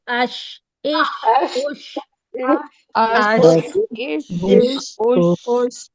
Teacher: आपकी जबान का दरमियानी हिस्सा ऊपर तालू पे लगना चाहिए